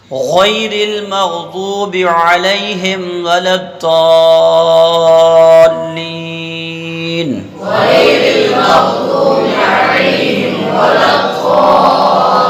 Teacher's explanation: غیر المغضوب علیہم ولا الضالین، غیر المغضوب علیہم ولا الضالین، جب پوری آیت کو ایک سانس میں پڑھیں گے تو اس بات کا دھیان رکھنا ہے کہ با پر جو زیر ہے یہ کھچے نہیں، یہ کیا نہ ہو، ذرا سا آپ ٹھہرو گے تو کھچ جائے گا.